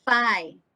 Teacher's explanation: your lower lip and your upper teeth is meeting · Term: labiodental